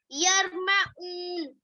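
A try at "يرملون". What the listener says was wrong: ऊन नहीं है, यरमलून है, यरमलून। ये हरूफ इदगाम है, कितने?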